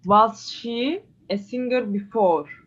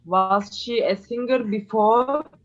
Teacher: so rising intonation because answerable by yes or no